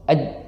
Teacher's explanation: Nah, terdapat sedikit perbedaan antara huruf jim dengan shin dan ya. Nah, jadi kalau jim itu tengah lidah. Nah, tengah lidah itu menempel ke bagian langit-langit.